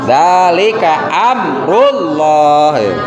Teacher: Amrullah, ada mim sukun di sana. Setelah mim sukun ada harokat, ada huruf ro. Maka itu harus dibaca idhar, harus dibaca jelas. Zalika amrullah, jangan didengungkan gitu kan.